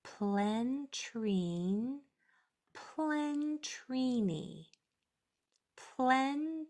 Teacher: you heard more of the voiceless P than you did of the L that is so it doesn't turn into a whole another syllable